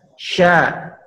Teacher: dengan menempelkan Tengah lidah ke langit-langit menyemburkan lidah-lidah ke lain-lain tapi tidak ditekan hanya digesekkan syaa cerca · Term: huruf syin